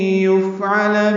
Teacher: عین لام جلدی پڑھیں گے. عین وسط حلق سے ادا کریں گے